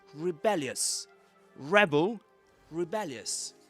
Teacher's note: And the accent goes on the second syllable in the second word.